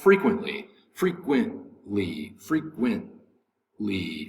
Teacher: the accents over the first syllable